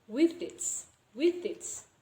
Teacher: the last pronunciation of the first word will be similar with the first pronunciation of the second word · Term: assimilation